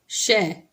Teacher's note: यानी कि मूर्धा इसका उच्चारण स्थान है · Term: मूर्धन्य श